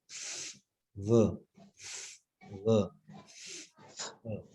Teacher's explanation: लेबियोडेंटल, एक होंठ और ऊपर वाले दांत